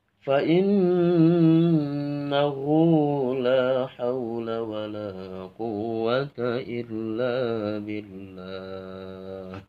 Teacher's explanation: pas fa'innahu itu nadanya agak ditinggikan